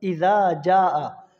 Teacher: یہاں پہ مد متصل ہو رہی ہے، اس کی مقدار ہوتی ہے 5 سے 6 الف